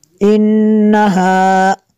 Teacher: انہا نون مشدد ہے، یہاں پہ غنہ کریں گے